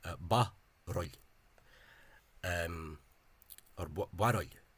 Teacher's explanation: 2 syllables with the shortening of the U